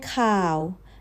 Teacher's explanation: low, flat, and down low